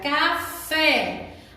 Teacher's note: A sílaba mais forte é fé. A última, então, ela é oxítona.